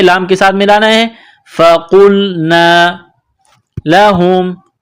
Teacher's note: قاف کو موٹا کرنا ہے، لام کے ساتھ ملانا ہے ، فقلنا لہم، ہا میم پیش ہم، لہم کونو، کاف کو